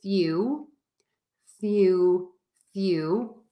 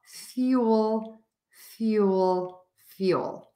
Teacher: Be sure to hold that L a little bit longer. Make that sound longer and stronger, and that's really going to help you.